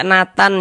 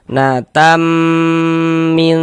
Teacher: suaranya itu kita tahan sejenak. Kita gunahkan, kita dengungkan kira-kira sepanjang dua harakat. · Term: idgham ghunah